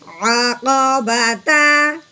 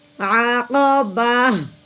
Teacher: تا ختم کر دیتے ہیں، پیچھے ہا کی وہاں نکالتے ہیں۔ تا زبر تا، عقبتا، آگے وقف عقبہ، ٹھیک ہے، عقبہ۔